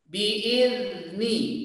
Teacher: Karena sifat dari huruf zal itu rokhawah, mengalir, ya. Jangan sampai dipantulkan.